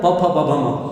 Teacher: तो ऊरस्व प फ ब भ म और उपद्मानीय, इनका उच्चारण स्थान औष्ठ्य है, होठों से निकलता है इनका उच्चारण। होठ अवरुद्ध कर लेते हैं श्वास वायु को, इसलिए औष्ठ्य है इनका उच्चारण स्थान।